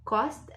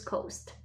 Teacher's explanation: So you see that cost is shorter sound than coast.